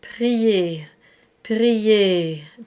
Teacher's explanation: We want that on the inside to be very open, very high, but the lips don't move all that much. It helps you avoid the diphthong. So for example, in the word prier, prier, the A stays almost in the same space as I, prier.